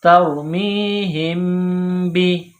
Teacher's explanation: میم ساکن کے بعد با ہے تو یہاں میم ساکن پر غنہ کریں گے